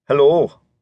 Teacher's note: "Hello," said more like, "hello." The closing sound elongated, farther back than it would have been in the mouth of an American.